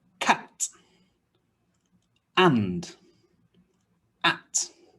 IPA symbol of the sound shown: æ